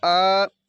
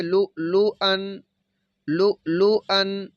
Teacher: जब हमज़ा पे वक़फ़ करना है तो फिर हमने इसको लू लू आ इस तरह पढ़ना है, और जब आगे मिलाना है तो फिर इसको हम पढ़ेंगे लू लू अन